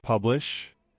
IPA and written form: ˈpʌb.lɪʃ (Publish)